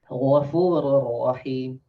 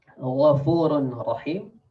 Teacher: So we don't read Ghafurun Rahim, but the nun, like the nun is gone, like it's merged, like we insert the nun to the next letter, to the ra